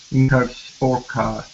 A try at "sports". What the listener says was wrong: Okay, add that s at the end. Sports. In her sports car.